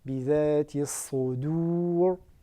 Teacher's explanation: Bidhati as-Sodur, on veille à bien la prononcer de manière amincie.